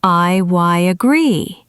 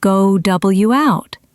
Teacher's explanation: native speakers often insert a tiny y or w sound between them. We call this intrusion. For example, in I agree, there is a y sound inserted.